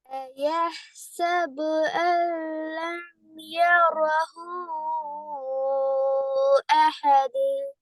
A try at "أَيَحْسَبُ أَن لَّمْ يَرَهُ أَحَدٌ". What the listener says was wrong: أحد دال வரணும். أيحسب أن لم يره أحد.